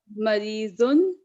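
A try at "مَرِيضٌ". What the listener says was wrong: बताइए, एक बात बताइए, आपने लगता तजवीज बिल्कुल नहीं पड़ी, इतना खींच क्यों रही हैं आप? मरीदुन, मरीदन, आप इतना ज्यादा खींचने की जरूरत नहीं है, नॉर्मल पढ़े। मरीजुन, मरीजन, मरीजिन।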